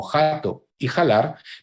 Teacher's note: La aspiración de la F es aceptable en voces como jato y jalar